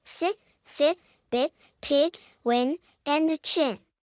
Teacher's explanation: made by bringing your tongue to the front of your mouth and raising it towards the roof of your mouth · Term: I sound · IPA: /i/